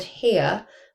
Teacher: Um, and we can tell that because then when it appears, so the word here, I would not use a R sound um at the end cuz mine is a non-rotic accent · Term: non-rhotic accent